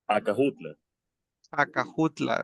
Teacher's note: Los españoles no podían pronunciar la SH.